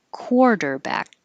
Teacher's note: A lot of rounding for the core.